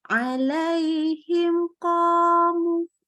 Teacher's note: Ketika mim sukun ketemu dengan huruf kaf dan qaf, ini mimnya kita baca jelas. Ya, nggak pakai tambahan gunnah, kita sebut nama hukumnya sebagai idhar syafawi.